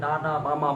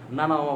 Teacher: আচ্ছা আরো কিছু বর্ণ আছে যে বর্ণগুলো বলতে গেলে আমাদের নাক প্রয়োজন, যেমন নাসিক্য বর্ণগুলা, নাকের বর্ণগুলা, নাক দিয়ে যে বর্ণগুলো উচ্চারণ হয়, আপনি নাক বন্ধ করে ডানা বামা বলা সম্ভব, নানা মামা বলা সম্ভব না, মানে বলা সম্ভব কিন্তু সাউন্ডটা ক্লিয়ার পাবেন না।